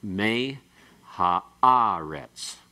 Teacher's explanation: you come up and you go down and then you come up higher and then go back down